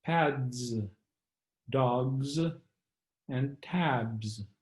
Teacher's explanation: if the word ends with a voiced consonant then the plural s is also voiced and pronounced as z